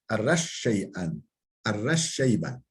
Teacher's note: Ve şin fi kavlihi, şin harfi fi kavlihi, yani ra şinde de idgam oluyor